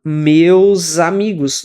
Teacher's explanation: Meus amigos, não tem porque dar uma pausa ali. Você junta o S que tem no final de meus com o A que tem no começo de amigos. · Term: connected speech